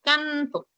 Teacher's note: Ok. Cuando tú dices canto, al momento que articulas el sonido de la N, la punta de tu lengua está cerca de tus dientes.